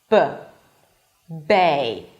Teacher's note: for the B, you block the air B and release it abruptly. B. For the V sound, you don't really block the air, but the air is like passing slowly between the teeth, right?